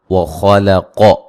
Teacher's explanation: خا اور قاف کو موٹا ادا کریں گے، لام کو درمیان میں باریک پڑھنا ہے۔